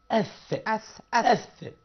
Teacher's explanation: اللسان مع الثنايا العليا لل أث